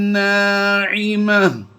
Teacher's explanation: گول تا کو ہم وقف میں ہا ساکن سے بدلتے جا رہے ہیں